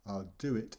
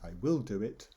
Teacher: I'm stressing the word will. Whereas the normal one, I'll do it, with no stress.